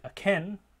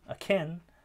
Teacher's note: syllables when the syllabus is unstressed they typically are unaspirated so a word like akin where we have stress on that final syllable can akin we get aspiration but in a word like aching